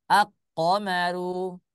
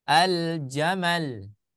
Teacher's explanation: Kalau yang alif lam qamariyah, dia dua-duanya dibaca. Lamnya jelas karena disifati oleh izhar. Kemudian qafnya juga jelas seperti itu ya.